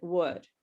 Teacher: I want to tell you that the L is silent. We don't say the L in would. Okay, it's silent.